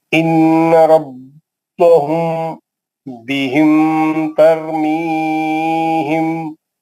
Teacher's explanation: اخفاء شفیع میں میم کو چھپا کو پڑھنا بولتا ہے